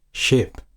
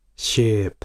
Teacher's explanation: So, for example, instead of ship, I say ship. It might sound more similar to sheep because I have produced a long vowel instead of a short.